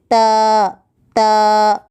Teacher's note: تا زبان کی نوک کو اوپر کے دانتوں کی جڑ کو لگانے سے ادا ہوتا ہے